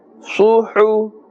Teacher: the makhraj is from the center of the throat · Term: ha